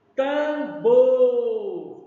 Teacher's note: A sílaba mais forte é o Bor.